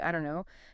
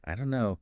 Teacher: the don't and no just merge. So becoming aware of this linking is really important for understanding and for sounding more natural yourself.